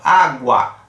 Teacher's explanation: que o é um pouquinho mais fraco do que o a praticamente a gente não pronuncia o u e se for comparado com o tanto que a gente fala no a